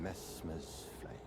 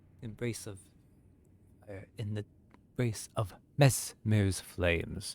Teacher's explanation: he's being very sibilant with the s's